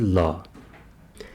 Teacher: जीभ की नोक मुंह के बीच में आकर दोनों ओर स्पर्श करती हैं तो उसको कहते हैं पार्श्विक व्यंजन, जैसे ल।